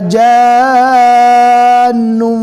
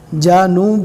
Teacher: یہاں پر دھیان سے پڑھنا ہے، بہت سے لوگ یہاں پر غلطی کرتے ہیں، جانوں پڑھتے ہیں۔ جیم کو نون سے ملانا ہے اور جیم کو اچھے سے کھینچنا ہے، نون کے اوپر بھی تشدید گنہ کر کے پڑھنا ہے۔